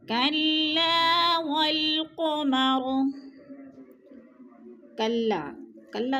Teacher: الف خالی سے پہلے لام کے اوپر زبر ہے تو الف مدہ، الف مدہ کو ایک الف دو حرکات کے برابر ہم نے کھینچ کر پڑھنا ہے